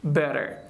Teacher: We have T between two vowels, so that's how we have to pronounce like D.